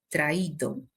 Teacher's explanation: vamos a tener entonces un iato, dos vocales y estos vocales se separan